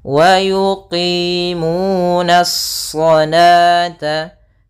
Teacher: Nah, alif lam di sini alif lam syamsiyah, yaitu alif yang ditulis tapi tidak dibaca. Langsung kepada huruf shad yang tebal. Hati-hati, nanya tetap tipis, shadnya memang tebal.